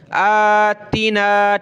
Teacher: کھڑا زبر کو ایک الف کی لمٹ میں کھینچیں گے